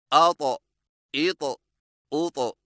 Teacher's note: ता मोटी और झटके वाली आवाज़। अदायगी के वक्त जुबान की नोक को सामने वाले ऊपर के 2 दांतों की जड़ से लगाएं और जुबान की जड़ को तालू की तरफ बुलंद करें।